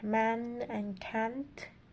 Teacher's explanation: Also, another important feature is that they use the diphthong in the word boat and road, and also another one would be using the short A, as in the word cat, and this one is raised and diphthongized before nasal consonants. So we would have another word like man and can't.